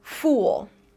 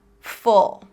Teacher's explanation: Fool has a tense tongue, uh uh v fool. Full has a relaxed tongue, uh v full.